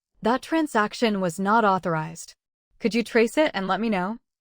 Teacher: Notice the pause after authorized. It adds firmness.